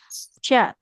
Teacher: tengah lidah menempel ke langit-langit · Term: huruf syin